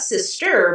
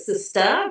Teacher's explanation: And so she shifted to, this pronunciation where it's not sister, but sister, her vowel changed. She dropped the R in a very canonical way for Black language.